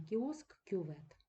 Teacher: ці звуки трохи-трохи пом'якшується це стосується не тільки губних звуків але задньоязикового к знову ж таки перед і перед я ю є він буде точно так же наполовину пом'якшуватися